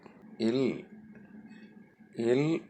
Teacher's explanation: மேல்வாய் பல்லின் அடியை நாக்கின் ஓரங்கள் தடித்து நெருங்குவதால் பிறக்கிறது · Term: லகரம்